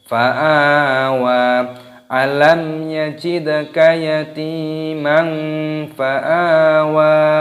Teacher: Yatimang fa'a dipanjangkan a-nya, ada tanda alifnya matabi'i.